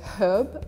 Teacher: in great britain you would say herb with the h